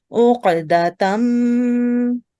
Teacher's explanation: we have mim mushaddad, so we will do gunna. We will stay on this mim sound.